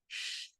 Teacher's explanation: Y luego la S con punto abajo también suena como SH, pero es completamente diferente, ya que la punta de mi lengua se va a doblar hacia atrás como queriendo tocar el paladar alto.